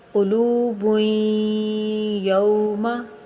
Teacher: غنّہ کریں گے رک کر، ناک میں آواز جا کر